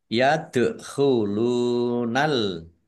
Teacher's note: dal sukun bacaan kolkolah, dibaca memantul, Iya. ditampakkan pantulannya.